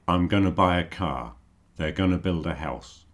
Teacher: when people are speaking you often hear going to pronounced Gunna